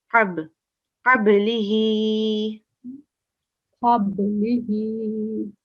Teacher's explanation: Sakin. Yeah, it's a sakin letter, but qalqala, a slight jerk